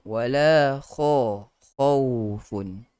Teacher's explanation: Dan khaufun itu kena hati-hati, jangan kita kalah dengan lin, sifat lin yang ada pada huruf waw itu, sedangkan huruf kha padanya ada sifat isti'la yang tebal.